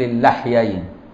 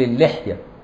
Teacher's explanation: اللحيين بفتح اللام في الأشهر، عكس اللحية فإنها بكسر اللام